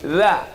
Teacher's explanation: Letakkan ujung lidah di ujung gigi.